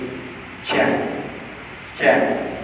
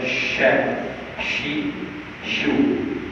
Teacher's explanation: Dia bersifat dengan rakhawah dan keadaannya lemah maka angin perlu dikeluarkan